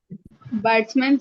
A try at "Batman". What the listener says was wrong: Batsman, nahi, Batman, not batsman. Batsman is, in cricket. Batman, B-A-T, Batman.